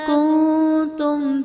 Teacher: کنتم میں نون ساکن کے بعد حروف اخفا میں سے تا ہے تو یہاں پر اظہار کا قاعدہ ہوگا، یعنی نون ساکن میں ہم غنہ کر کے پڑھیں گے۔